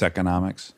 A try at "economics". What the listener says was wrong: no, it's economics. You wish it was economics. Because you don't like that hard E.